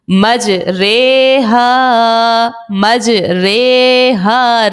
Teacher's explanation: رے پڑھنا ہے، ری نہیں پڑھنا. صرف اسی ایک لفظ میں امالہ کرنا ہوتا ہے.